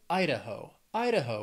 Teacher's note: Idaho has three syllables stress is on that first syllable